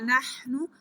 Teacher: ہلکی لیٹر ہے، گلے کے درمیان والے حصے سے پڑھا جائے گا